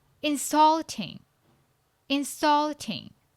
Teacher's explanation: Which syllable is the loudest? Yes, the second syllable.